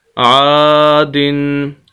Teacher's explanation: ایک کھڑی زبر کے برابر یا ایک الف کے برابر ہم نے اس کو کھینچنا ہے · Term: الف مدہ